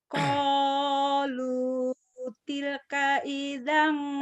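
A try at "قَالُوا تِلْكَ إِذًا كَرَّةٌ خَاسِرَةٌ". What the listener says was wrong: Sepet. Jangan sepet. Iya, Ibu tinggal lembutnya nih. Lembut tetap kencang ya.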